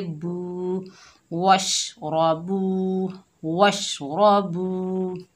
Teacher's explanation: रा के ऊपर ज़बर है, बगैर खींचे पढ़ेंगे रा, रा मोटी पड़ी जाएगी और रा। बा के ऊपर पेश है, आगे वाव साकिन है, ये वाव मद्दा है, एक अलिफ की मिकदार खींचकर पढ़ेंगे